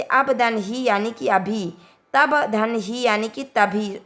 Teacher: अल्प प्राण के बाद हा आने पर दोनों मिलकर महाप्राण हो जाते हैं।